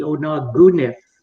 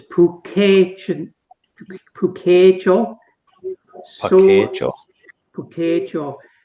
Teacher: it actually has a K, but it sounds like a G